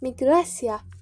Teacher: Miqrasiya sözünü tələffüz edərkən miqrasiya, baxın, vurğu aya düşür, yəni ikinci hecaya düşür. Parametr ikinci hecaya düşür.